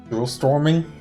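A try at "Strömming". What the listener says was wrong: The R comes before the O. So Stroming. Yeah, the emphasis is probably somewhere else. So Stroming.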